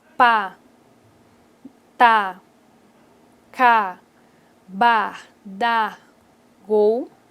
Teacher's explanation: No português, essas sílabas são oclusivas, porque ocorre obstrução da corrente de ar